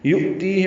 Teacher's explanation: یؤتیہ میں حمزہ ساکن جھٹکے سے ادا ہوگا ، تی یا مدہ ہے، دو حرکات لمبا کریں گے، ہا